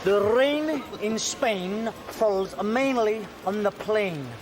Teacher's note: give it a go tighten the top of your mouth and when you get to the word falls just linger over the vowel